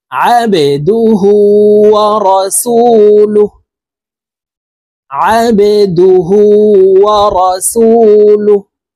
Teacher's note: এই বা কলকলার হরফ নিচের দিকে ধাবিত করে ধাক্কা দিয়ে উচ্চারণ করব।